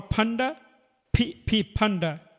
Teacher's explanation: ঠোঁট ভাঁজ করে, 2 ঠোঁট ভাঁজ করে উচ্চারণ করিতে হয়